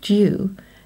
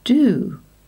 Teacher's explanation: in the UK it usually has a /ue/ sound but in America it is often pronounced with an /oo/ sound